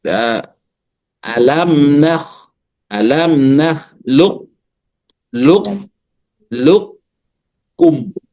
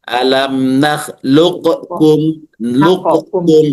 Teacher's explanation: sedangkan idgham naqis menempatkan sifat istilla pada huruf qof terlebih dahulu tanpa qalqalah dan mengidghamkannya.